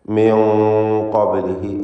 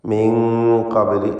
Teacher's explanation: മണിക്കലിലും തഫ്ഖീം വേണം. പെരുപ്പിച്ച് ശബ്ദഭാരത്തോടെ ഉച്ചരിക്കണം.